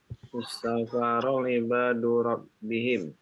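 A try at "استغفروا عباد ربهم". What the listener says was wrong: Itu salah barisnya ya. Yang benar Rabbahum. Ya. Enggak benar juga Rabbahim, enggak benar.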